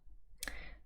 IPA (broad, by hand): ʊ